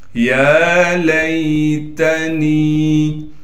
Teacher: یا پر کڑا زبر ہونے کی وجہ سے یا کو ایک الف کی مقدار کھینچیں گے